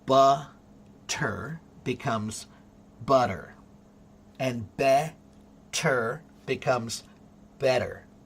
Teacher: It's a hard t. But when you speed up the word butter, that t begins to sound like a soft d, which is what you call the flap t, which is a stupid name for it.